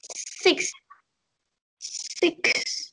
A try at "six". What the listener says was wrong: Ừ, vẫn đang hơi y dài rồi. Y ngắn thì đọc nhanh